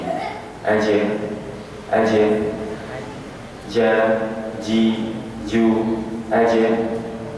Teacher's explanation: yaitu di langit-langit atas bagian tengah tapi mengambil langit-langit Yang kerasnya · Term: huruf Jim